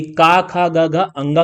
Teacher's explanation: जो हमारा क वर्ग था इसका उच्चारण स्थान क्या हो गया, कंठ हो गया